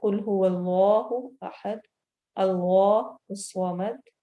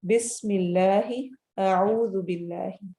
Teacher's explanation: اگر اللہ والے لام سے پہلے والے لفظ کے اینڈ کی حرکہ کسرہ ہے یعنی زیر ہے، تو ہم اس اللہ کو باریک پڑھیں گے